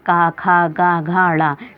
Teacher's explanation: कंठ से बोले जाते हैं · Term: का वर्ग